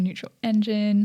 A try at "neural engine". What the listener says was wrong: Did you just say neutral engine? No, you've added a T in there. That's neural. Like brainwaves. Think brainwaves.